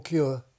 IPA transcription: kjʊə